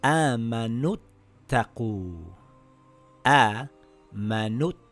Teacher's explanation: Now we drop the long vowel. Now it reads Amanuttaqu.